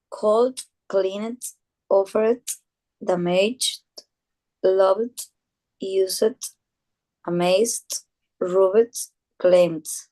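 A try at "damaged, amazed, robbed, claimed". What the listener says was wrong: remember damaged, amazed, robbed, and claimed. We don't we don't pronounce the e.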